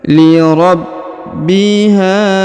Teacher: huruf ha yang ini dipanjangkan dua harakat karena di depannya terdapat Alif